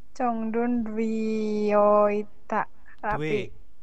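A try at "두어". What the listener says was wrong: Due bukan dwi. Due pakai e, due. Ya, due ya, bukan dwi.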